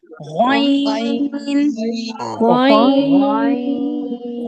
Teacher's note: غین، یہ موٹا حروف ہے، اس کو بہت موٹا کر کے ادا کرتے ہیں، اور یہ حلق کے وہ والے حصے سے قریب ہے جہاں ہماری زبان لگتی ہے